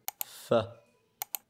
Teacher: 4- Labiodental، وهو التقاء الشفة السفلية مع الأسنان العلوية